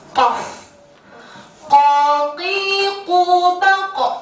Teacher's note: Pangkal lidah dekat tenggorokan menyentuh sekitaran anak tekak atau berada di atas pita suara. Atau pangkal lisan dengan langit-langit atas. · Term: huruf qaf